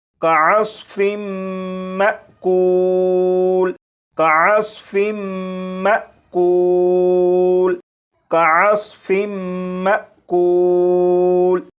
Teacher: اب ان دونوں الفاظ کو پڑھیں گے، یہاں پر میم مشدد پر غنہ بھی ہوگا اور یہاں پر الف کے اوپر جزم ہے، یعنی یہ حمزہ ساکنہ ہے، تو حمزہ ساکنہ کو جھٹکا دے کر پڑھیں گے